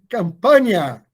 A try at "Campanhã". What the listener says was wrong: Tem um tio no finalzinho, na última letra A.